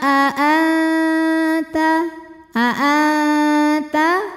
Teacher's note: aqrab ikhfa aqrab sebab nun sukun menghadapi huruf ta cara bacanya Nun disamarkan menuju makhraj huruf ta disertai bunyi dengungan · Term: ikhfa Hakiki